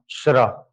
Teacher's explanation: श्र का उच्चारण श और र से, श कहां से, तालु, और र कहां से, मूर्धन्य, तालव्य मूर्धन्य ध्वनि है कौन, श्र, ठीक है।